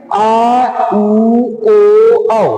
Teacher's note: इनको कहते हैं पश्च स्वर। इसमें जीभ का पिछला भाग, जीभ का पिछला भाग ऊपर उठता है